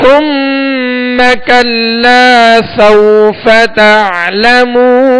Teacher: ثم یہاں سا ہے، سا کو نرمی کے ساتھ پڑھیں گے، اس میں سیٹی کی آواز بالکل پیدا نہ ہو. اور کلا یہاں لام کے ساتھ الف مدہ ہے.